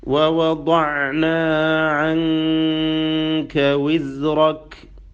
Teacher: ദ്വാദിൻ്റെ ഉച്ചാരണം, അതിൻ്റെ മഖ്റജ്, നാവിൻ്റെ ഒരു ഭാഗം മുഴുവനായിക്കൊണ്ട് ഒരു സൈഡ്, ഒരു അരു, അത് മേലെ മാ യുഹാദിഹി മിനൽ ഹനക്കിൽ അഅല അല്ലെങ്കിൽ മിനൽ അദ്റാസ്, മേലെ അണപ്പല്ലിനോട് ചേർത്ത് വെച്ചുകൊണ്ട്, മേലെ അണപ്പല്ലിനോട് ചേർത്ത് വെച്ചുകൊണ്ടാണ് ദ്വാദ് ഉച്ചരിക്കേണ്ടത്. മാ യുഹാദിഹി മിനൽ അദ്റാസിൽ ഉലിയ.